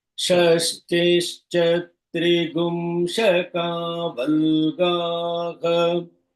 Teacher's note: The swaritam is on the sha.